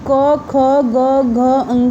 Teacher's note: क ख ग घ अंग जब हम बोलेंगे तो ये कंठ से इसकी आवाज़ तुरंत डायरेक्ट निकलती है